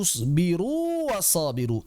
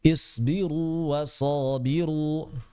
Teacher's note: Waw yang pertama Ini mad, keluarnya dari jauf, huruf vokal, dia huruf vokal. Waw yang kedua keluar dari syafatan, dia konsonan.